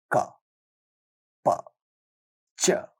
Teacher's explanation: Inherently, you find a built-in vowel sound a at the end of the consonant sound. In fact, it is not possible to say a consonant sound without the help of that inbuilt vowel sound in it.